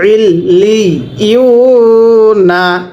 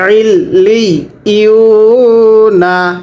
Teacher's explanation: পেশের পরে ওয়াও সাকিন এক আলিফ টান দিব, নুন জবর না, ইল্লি ইউ না, একসাথে ইল্লি ইউ না।